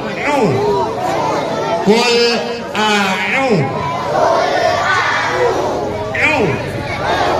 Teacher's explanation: Rasakan di tengah kerongkongan. Ain itu keluar di tengah kerongkongan. Dia huruf kerongkongan.